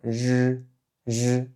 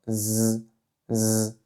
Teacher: Aussi, petite particularité sur la prononciation de l'initiale R en chinois. Dans le sud de la Chine et à Taïwan, souvent, les personnes ne vont pas la prononcer comme J, J, mais ils vont la prononcer comme Z, Z, donc un espèce de Z.